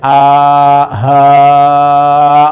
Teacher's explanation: ha a dengan ha itu kan ditenggorokkan bagian bawah harful hawa ya a ha enggak ada jeda di sininya keluar a ha jadi kalau kita pegang di sini ini enggak gerak nih a enggak ketahan beda dengan ha ya.